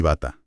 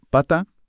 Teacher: Esa vibración minúscula, casi imperceptible en las cuerdas vocales al pronunciar la B frente a la sequedad de la P